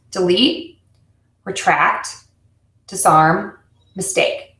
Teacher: we're actually stressing if you think about it the most important part of that word which is the root word